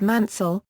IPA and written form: ˈmænsəl (Mansell)